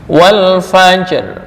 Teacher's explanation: Ada lagi kalqas wal fajri, bukan wal fajr, bukan, tapi wal fajr tipis, wal fajri ro-nya tipis, wal fajr. Jadi harus tetap kedengeran sedikit. Iya, harus sedikit, harus kebaca.